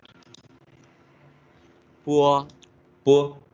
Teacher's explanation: O. You can hear a little bit the wu sound, like w, 乌 and more o sound. Towards wu sound to o sound. 波 Bo, 呼 bu, 坡 po, 呼 pu, 摸 mo, 木 mu, 坡 fu, 呼 fu, 安 an, 昂 Remember I said this nasal, big nasal sound.